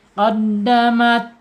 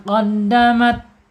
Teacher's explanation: Al-hamsu atau al-hams, mengalir ya ketika dia sukun.